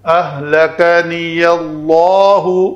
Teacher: اس میں جلالہ کا ماقبل زبر کے ساتھ ہے تو اس کو ہم لام کو پر پڑھیں گے